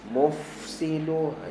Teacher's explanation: suka tenggelam Fa dia suka tenggelam dalam Sin nak mufsilu okey lepaskan hams dulu pada Fa kemudian baru masuk pada Sin